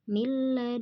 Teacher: nun sukun bertemu lam, maka dia dibaca melebur tanpa mendengung atau hukum tajwidnya idgham bila gunnah.